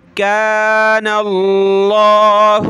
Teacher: لفظ اللہ سے پہلے نون پہ زبر ہے تو موٹا کر کے پڑھیں گے